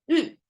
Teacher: it's a falling tone, not a rising tone. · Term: fourth tone